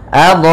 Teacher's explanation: Sehingga panjangnya kita panjangkan dulu, cara membacanya yaitu adha'at. Panjangkan dulu dha-nya baru ke a. Kemudian pada lafal ta, at di sini ta memiliki sifat hamas. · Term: mad wajib muttasil